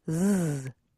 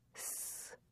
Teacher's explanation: S and Z sounds are produced in the same way. The only difference is that Z has a buzz, or is voiced, Z, and S does not, S.